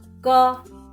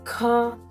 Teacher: Unaspirated consonant or Vyanjan are pronounced without ha sound. So, the first letter ka is without ha sound. The second letter kha is with ha sound.